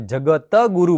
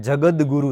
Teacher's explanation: બનવો જોઈએ પણ એવો નથી બનતો ત્યાં જગદગુરુ થઈ જાય છે તો ત નો દ થવાનું કારણ સંધિનો નિયમ છે